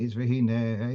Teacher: that's mil-ra, which means at the end, at the last syllable, that's where the stress is.